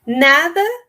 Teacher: Nada, esse D que ela pronuncia também bem relaxado, né? que esse D entre vogais no espanhol também é pronunciado de uma forma bem relajada. Em alguns aspectos, ele pode até ser eliminado, né?